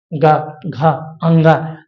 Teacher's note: अंगा को बोलेंगे तो नासिक का भी तो यहां उपयोग हो रहा है